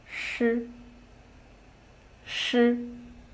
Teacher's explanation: The tip of the tongue is raised to a position close to the hard palate. Here, the airstream is released.